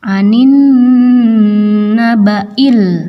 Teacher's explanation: Anin nun ini adalah gunnah, maka harus ditahan karena ada tasydid dan didengungkan.